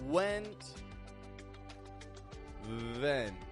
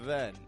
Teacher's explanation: So that's the big difference here. W contracts the lips. V has the bottom lip lightly touch the top teeth.